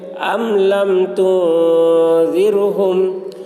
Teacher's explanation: میم ساکن کے بعد با اور میم کے علاوہ حرف آ رہا ہے، اس لیے میم کو ظاہر کر کے پڑھیں گے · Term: اظہار شفوی